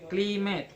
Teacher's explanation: Cli is stress, met unstress. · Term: primary stress on first syllable